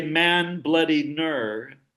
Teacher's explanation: there was an n at the end of the first syllable and at the beginning of the second syllable. So it's as if they had ambul syllabicity stuck bloody in the middle and got two ends.